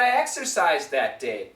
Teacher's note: the z sound cancels the D wait the D and the the are similar sounds just like